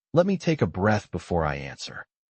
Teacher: The word breath is longer and louder. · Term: emphasis